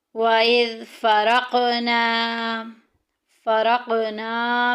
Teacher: قوف میں کلکلا ہو رہا ہے، آواز کو لہرا کے باہر نکالیں گے